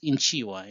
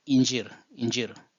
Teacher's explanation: You can see the ch changing into j.